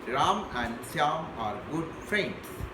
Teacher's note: and is weakened to an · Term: weak forms